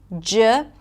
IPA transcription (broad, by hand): dʒ